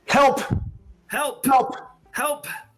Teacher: You're going to get the soft H sound and then the P, which is the plosive.